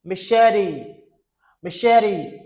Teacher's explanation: Machete. You see the T sounds like D. This is a flat T. Okay? Machete.